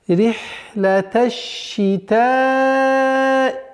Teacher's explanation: Здесь удлинение в размере 4 огласовок.